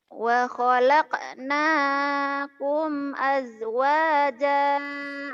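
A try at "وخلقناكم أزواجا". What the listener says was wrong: ini z jangan aj ya lagi.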